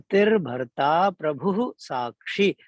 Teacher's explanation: ये विसर्ग के बाद जब सा आता है ना, कोई सा भी तीनों में से सा, चाहे तो दंती, तालव्य या तीसरा कौन सा होता है, हाँ, तो जो विसर्ग होता है उसका उच्चारण आगे आने वाले शा के ही प्रकार का आधा सा हो जाता है ना